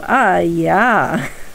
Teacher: Whenever you see an accented letter, it has a high tone, and then an unaccented letter is low, well, not like, just a neutral tone. So anytime it's high and then neutral, it's basically a falling tone.